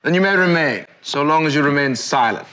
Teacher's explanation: He's got a little bit of the rolled R.